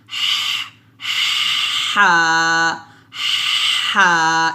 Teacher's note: টা যখন উচ্চারণ করব অবশ্যই একটা এই ধরনের শ্বাস বের করব শ্বাসটা বের করে উচ্চারণ করতে হবে অর্থাৎ চিকন একটা শ্বাস বের করে উচ্চারণ করতে হবে হা এভাবে আমি আবারো বলি এটা হচ্ছে হা আর এটা হচ্ছে